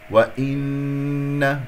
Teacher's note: نون مشددة، الغنة كما سمعتم أكمل ما تكون